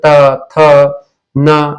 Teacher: इसके अलावा तीसरा होता है दंत व्यंजन। इनका उच्चारण जो है ऊपर के दांतों की पंक्ति और जिह्वा के अग्र भाग से किया जाता है। जैसे त थ न इसको बोलने से जीभ जो है जीभ का आगे वाला भाग दांत को स्पर्श करता है। · जैसे त थ न इसको बोलने से जीभ जो है जीभ का आगे वाला भाग दांत को स्पर्श करता है। उसको दंत व्यंजन कहते हैं।